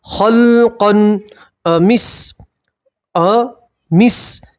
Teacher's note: تنوین کا اظہار ہوگا، آپ یہاں گننا نہیں کریں گے